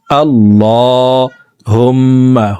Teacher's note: হুম এখানে ওয়াজিব গুন্নাহ, 3 সেকেন্ড পরিমাণ গুন্নাহ করে পড়বো।